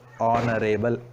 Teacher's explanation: H silent here. Though the word honorable has began with H consonant, we don't pronounce that. That remains silent.